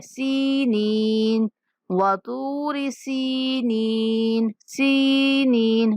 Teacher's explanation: تو آ کو موٹا، تو آ کے بعد واو مدہ، تو آ کو تھوڑا لمبا کرنا ہے۔ سینین، سین کے بعد بھی یا مدہ ہے اور نون کے بعد بھی یا مدہ ہے، تو ہم نے سین اور نون دونوں کو لمبا کر کے پڑھنا ہے۔